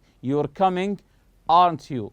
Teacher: Your voice goes up when we check information. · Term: rising intonation